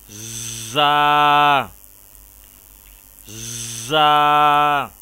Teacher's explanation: دانتوں کو بند کر کے سیٹی کی طرح آواز نکالتے ہوئے حرف زا کو ادا کیا جائے گا